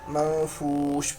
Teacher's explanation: تو نون کی آواز کو ہم چھپائیں گے، تو اسی کو اقفا کہتے ہیں